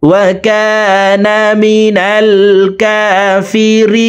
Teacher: টানিয়া পড়িতে হয়। ওয়া কানা মিনাল কাফিরিন, রি এখানে তিন আলিফ টেনে নুনকে সাকিন করে ফেলবো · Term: মুদ্দা আরজি